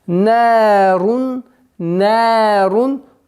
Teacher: Нарун, нарун, долгота в размере 2 огласовок. Нарун, танвин, полное четкое произношение, потому что здесь правило изгар, ясное чтение.